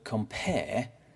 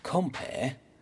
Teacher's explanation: the word compare is iambic because there's less stress on com and more stress on pair